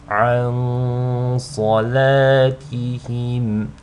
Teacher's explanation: you want to hold on to the nasal sound on the nun sakina for just two counts because of the sad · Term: ikhfa